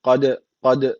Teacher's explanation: d harfi kalkale harflerinden birisiydi cezim alırsa orada kalkale tecvidi ortaya çıkıyordu Dolayısıyla burada kalkale var Ne yapacağız hafif bir ağızdan vurgulayacak k